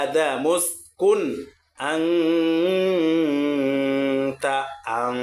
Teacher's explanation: এই নুন সাকিনকে কিন্তু গুন্না করেছি। কেন? এই নুন সাকিনের পরে তা আসছে।